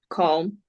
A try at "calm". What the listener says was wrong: I hear L. Should it be there?